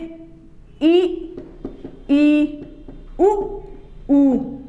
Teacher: मुख न तो बंद होता है और न खुला हुआ होता, थोड़ा सा खुला हुआ होता है